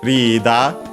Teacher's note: it's accented as expected on the ri, the first syllable